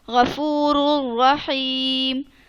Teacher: میں نے اس را کو دوسری را میں مدغم کر کے پڑھ دیا